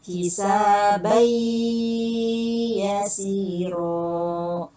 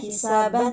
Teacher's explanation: Karena ini hukumnya idgham tanwin bertemu dengan ya, maka dilebur suara tanwinnya menjadi suara huruf idgham yang ya. Bacanya hisabai yasiro. · Karena ini hukumnya idgham bigunah, artinya melebur suara tanwin dengan ditahan, ya. Dengan ditahan 2 harokat. Nggak boleh dibacanya hisaban, nggak boleh baca hisaban, tapi hisabai yasiro.